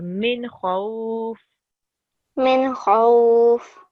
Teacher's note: we don't hold it at all. It's just min khawf because it's followed by a letter of halaki or throat letter. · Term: izhar letter